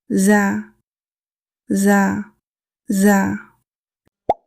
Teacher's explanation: The articulation of zaa is the tip of the tongue near the upper front teeth. In English, we say like Z in zoo.